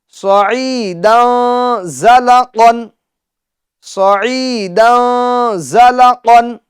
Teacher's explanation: صاد کو پور کریں گے، اور دال کی تنوین میں اخفا یعنی گننا ہوگا، کیونکہ تنوین کے بعد حروف اخفا میں سے زا آ رہا ہے